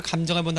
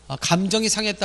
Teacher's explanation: 감정해 본다 할 때 감정은 짧게 내지만, 감정이 상했다 할 때 감정은 길게 낸다는 것을 볼 수 있겠군요.